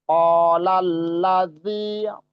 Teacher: Bukan zai, tapi zal ya. Ujung lidah bertemu dengan ujung gigi seri atas.